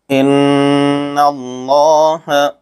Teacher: یہاں لفظ اللہ کے لام سے پہلے زبر ہے، اس لیے لفظ اللہ کے لام کو پر پڑھیں گے۔